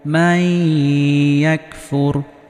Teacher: নুন সাকিনের পরে ইয়া আসার কারণে এখানেও গুন্নাহ সহ মিলিয়ে পড়েছি। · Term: ইদগামে বা গুন্নাহ